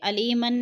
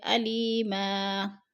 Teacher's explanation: دو زبر تنوین، وقف کی صورت میں ہم ایک زبر میں بدل کر پڑھیں گے، علیمن نہیں پڑھیں گے بلکہ علیما۔